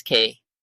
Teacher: its pronunciation is slightly more aspirated than GB set B the letter you already know B BB